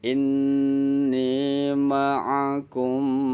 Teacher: Ma'al ghunah bersama dengan mim ghunah. Jadi kita baca inni ma'akum, tengungnya agak lama. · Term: ghunah musadadah